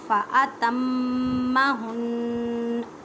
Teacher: میم مشدد ہے، نون مشدد ہے، اس وجہ سے یہاں پر دونوں پر گننا کریں گے. گننے کا مطلب ہے آواز کو ناک میں لے کے جانا ایک الف کی مقدار میں.